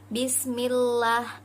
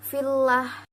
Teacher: Untuk lafaz Allah yang didahului dengan huruf berharokat kasroh maka dibaca tipis atau tarkik.